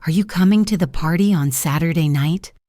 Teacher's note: Notice how my voice goes up at the end. Night. This is very common for yes or no questions in English.